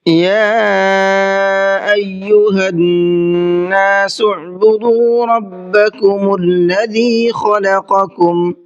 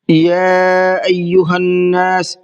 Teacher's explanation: یا کے اندر مد منفصل کا قاعدہ ہے، اس لیے اس کو تھوڑا زیادہ کھینچ کر کے پڑھیں گے۔